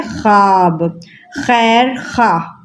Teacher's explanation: جب واؤ سے پہلے خ اور بعد میں الف آ جائے، ٹھیک ہے، تو وہاں پر واؤ سائلنٹ ہو جاتا ہے